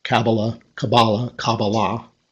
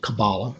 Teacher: the standard pronunciation in the dictionary and most American usage is to accent the second symbol